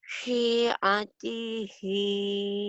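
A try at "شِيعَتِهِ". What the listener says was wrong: Syinya panjang syi'at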